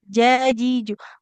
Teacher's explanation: Kalau ja, Jim itu nanti posisinya dia tengah lidah kita. Tengah lidah kita menempel ke langit-langit mulut atas. Itu baru huruf jim.